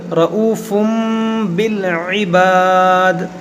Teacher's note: یہاں پر دیکھیں تنوین کے بعد با ہے اور یہاں چھوٹا سا میم بنا ہوا ہے، تو یہاں پر اقلاب کا قاعدہ لگے گا. اس تنوین کے اندر جو نون ساکن ہے اس کو ہم میم سے بدل کر پڑھیں گے